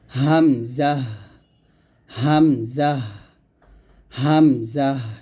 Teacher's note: আমরা কন্ঠের শুরু থেকে এই হামজাটি উচ্চারণ করব স্বাভাবিকভাবে · যখন আপনি হামজা উচ্চারণ করবেন বাতাসটা বন্ধ থাকবে · তো হামজার মাখরাজটা হচ্ছে কণ্ঠনালীর শুরু হয়তো উচ্চারিত হয় মাখরাজ অর্থাৎ এই যে এটা হচ্ছে আমাদের কণ্ঠনালী